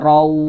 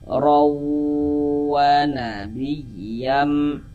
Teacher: Di bagian rawnya itu suaranya itu kita tahan nih, kita panjangkan sebentar. Kita gunnahkan sepanjang 2 harokat. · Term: Idgham bi gunnah